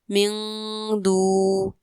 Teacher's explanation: یہاں پر نون ساکن کے بعد دال حروف اخفا میں سے ہے تو یہاں پر اخفا یعنی غنہ کیا جائے گا